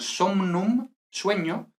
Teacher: O mn, que aquí realmente lo que pasa es que esta mn, primero, asimila, entonces mn se convierte en nn, y ya luego nn actúa como nn original